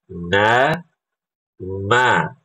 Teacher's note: Cukup ibu bisa rasakan ketika ibu baca huruf nun itu ada getaran di hidung. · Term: gunnah